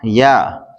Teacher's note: یا زبان کے درمیان تالو کے درمیان سے ادا ہوتا ہے